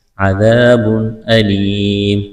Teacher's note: تنوین کے بعد حروف حلقی میں سے حمزہ ہے، تو یہاں پر اظہار کریں گے، آواز ناک میں نہیں چھپائیں گے، غنہ نہیں کریں گے · یا ساکن سے پہلے زیر ہے، یا مدہ ہے کہ الف کے برابر کھینچنا ہے، وقف کریں گے، میم کو ساکن کریں گے۔